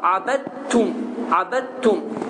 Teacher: Dəl yazıldığı halda oxunmur. Dəl yazılsa da burada bu həmin sözdə tələffüz olunmur və tə hərfi şəddələnir və abəttum deyə tələffüz olunur. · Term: idğam